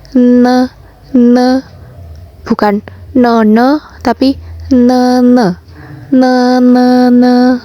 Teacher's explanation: Te, ne, le. Untuk membaca N itu lidahnya tetap menempel di gigi bagian atas. Jadi lidahnya tidak hanya menempel di gusi, tapi juga menempel di gigi bagian atas.